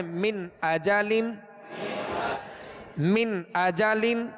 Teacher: نون ساکن کے بعد حمزہ ہے، اور حمزہ حروف حلقی یعنی 6 حروف جو ہیں ان حروف میں سے حمزہ ہے. من اجالن، جھٹکا بھی نہیں دینا اور غنہ بھی نہیں کرنا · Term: اظہار